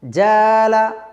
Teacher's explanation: আলিফ টা পাতলা অক্ষর আবার আলিফ টা ডানদিকের হরফ টাও পাতলা অক্ষর এইজন্য দুটোই পাতলা হবে বা বারিক হবে